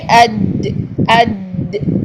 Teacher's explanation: زبان کا بالکل مڈل آف دی ٹنگ جو ہے یہ اوپر تالو کے ساتھ لگ رہی ہے، چپک کر ادا ہو رہی ہے، ٹھیک ہے۔ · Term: جیم